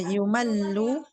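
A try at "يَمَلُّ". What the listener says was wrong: Yamalu. Bukan yumalu, yamalu.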